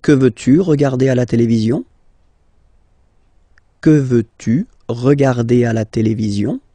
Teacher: I've been raising a little bit my voice at the end